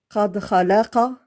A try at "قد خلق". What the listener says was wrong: Quand tu les attaches, on n'entend pas ta qalqala. Non, non. Il faut que tu arrives à dire قد خلق قد خلق.